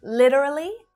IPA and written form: 'lit (ə) rə li (literally)